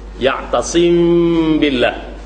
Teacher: Ya'tasim billah, tidak dirapatkan dua bibir mulut. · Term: ikhfa syafawi